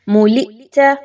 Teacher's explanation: اب اس میں حمزہ ساکن کے ساتھ آ گیا تو اچھے سے جھٹکا دیں